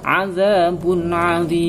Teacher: Boleh 1 alif, boleh 2 alif, boleh 3 alif. Artinya boleh 2 harokat, boleh 4 harokat, boleh 6 harokat. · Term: mad 'arid lis sukun